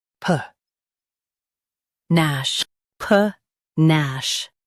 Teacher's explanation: Stress nash and keep pa soft.